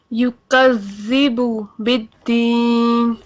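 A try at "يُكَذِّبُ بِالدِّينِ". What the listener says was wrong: کاف کو باریک رکھیں، آپ ذرا کاف پہ کنٹرول نہیں کر پا رہی ہیں، کاف پہ کنٹرول رکھیں. یکذب کذب.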